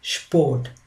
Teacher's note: Instead of the sound S, it has sound sh, and the rest remains the same.